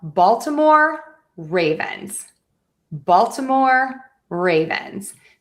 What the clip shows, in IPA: ˈbɔːltɪmɔːr ˈreɪvənz